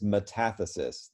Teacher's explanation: the accent is on the second syllable